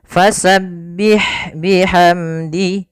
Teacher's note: pada lafal ha ada sifat hamas, mengalirnya nafas. Fasabbih, jangan bih, tapi dia pendek aja.